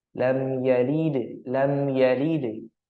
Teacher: hukum-hukum bacaannya yaitu ee yang pertama ada mim sukun di sana mim sukun yang bertemu dengan haruf Ya maka dibaca izhar syafawi atau jelas di bibir